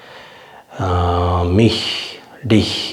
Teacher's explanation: மாதிரி இந்த இஹ் வந்து தமிழ்ல சொல்ற மாதிரி இஹ் நிப்பாட்டாம கொஞ்சம் அந்த இ கொஞ்சம் அழுத்தி கொஞ்சம் காத்த வெளில விடணும்